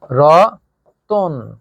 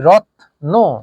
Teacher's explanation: যখন আমরা উচ্চারণ করেছি রত্ন, তখন এই তয়ের পরে কোনো স্বরধ্বনি উচ্চারিত হয়নি, এজন্য কিন্তু আমরা হসন্ত চিহ্ন বা হর্ষ চিহ্ন দিয়ে দিয়েছি, অর্থাৎ এর পরে কোনো স্বরধ্বনি উচ্চারিত হয়নি।